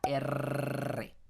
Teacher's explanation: lo que estamos haciendo vibrar es nuestra lengua directamente en el alvéolo. Entonces es una alveolar vibrante múltiple.